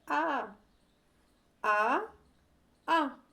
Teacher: मुख का आकार थोड़ा ज्यादा खुल रहा है। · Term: विवृत